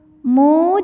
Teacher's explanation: Mad Thobi'i dahiri sebab ada wau sukun yang sebelumnya berharakat dhamah maka huruf mim ini kita panjangkan dua harakat juga